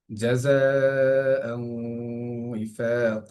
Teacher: জাযাআন উইফাকা, এখানে জায়ের মধ্যে চার আলিফ পরিমাণ টান